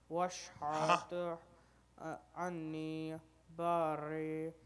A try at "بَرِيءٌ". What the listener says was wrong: کھینچے کھینچے کھینچے مد ہے نا مد کھینچے.